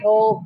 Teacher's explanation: the word over which has two syllables becomes mono syllabic